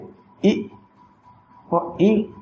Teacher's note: तालु से बोले जाएंगे ई और ई।